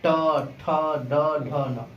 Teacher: हमारा तालु और दांत का जो मसूड़ा है, इन दोनों के बीच में बोला जाता है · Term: मूर्धा